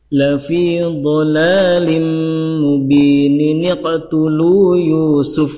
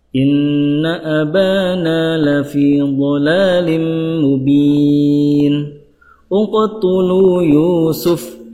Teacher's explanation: nun kecil itu dibaca apabila disambung atau diwasolkan